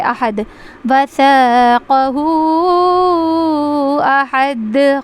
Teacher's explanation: اس کے بعد ہے وَلَا يُوثِقُ، یا واو پیش یو، اس کو ہم کھینچیں گے واو مدہ کو، اور ثقو قاف کو جلدی پڑھیں گے، وَلَا يُوثِقُ وَثَاقَهُ احد، یہاں پہ مد منفصل ہو رہا ہے اور یہاں پہ قلقلہ ہو رہا ہے، احد، وَثَاقَهُ احد، قلقلہ آواز باؤنس ہو رہی ہے